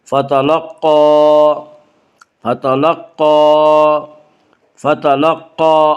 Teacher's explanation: فتلقى، قاف کو پر پڑھیں گے، قاف حروف مستعلیہ میں سے ہے